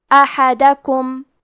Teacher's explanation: کلمت احدکم میں ہا کو ہم حلق کے درمیان والے حصے سے پڑھیں گے، اور کیونکہ الف پہ، ہا پہ اور دال پہ تینوں پہ زبر ہے، تو ہمیں یہ تینوں زبر کو ظاہر کرنا ہے اور اسے برابر سے ادا کریں گے.